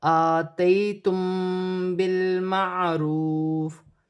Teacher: میم ساکن کے بعد با آ رہی ہے، یہاں پر اخفا مال غنہ کا قاعدہ ہے، چھپا ہوا غنہ کیا جائے گا، جیسے آتیتم بالمعروف.